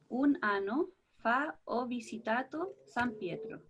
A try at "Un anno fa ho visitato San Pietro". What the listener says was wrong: Ahora, si me la pudieras leer de nuevo pronunciando las dobles. Un anno fa ho visitato San Pietro. Ya, no, siempre les recuerdo la importancia sobre todo de la palabra anno, pronunciarla bien.